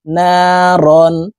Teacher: তানউইনের পরে ইজহারের হরফ হা আসছে, এই কারণে এই তানউইন ওয়ালা রটি গুন্নাহ ছাড়া স্পষ্ট করিয়া পড়ব। নারন হা আলিফ জবর হা এক আলিফ টান হবে জবরের বাম পাশে খালি আলিফ মদের হরফ ডান দিকের হরকতকে এক আলিফ টানিয়া পড়িতে হয়।